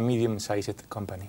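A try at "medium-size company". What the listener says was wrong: Ante la duda, di medium-size. Size, no sized. Para facilitar, porque cuando hablamos los nativos, aunque escribiendo decimos medium-sized company, when we speak with a medium-sized company.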